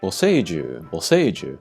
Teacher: the center sound is kind of stressed because of the long vowel